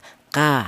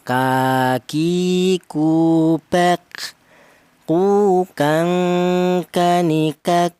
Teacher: Pangkal lidah ada 2 huruf, yaitu huruf kaf dan huruf qaf ya. Keluarnya berasal dari lidah bagian belakang itu pangkal lidah